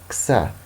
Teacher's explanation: an affricate, which is a plosive and a fricative combined into one